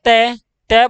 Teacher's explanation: हमारे दांतों को हमारी जीवा छू रही है तो हमारे मुख से वायु सिधि बाहर नहीं निकली · तो इसी तरह से हमसे प्यारे साथियों, तय बोलना तय, तय बोला तो हमारे दांतों को हमारी जीभ छू रही है